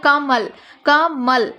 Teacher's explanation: म पर हम लोग बल दे रहे हैं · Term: बलाघात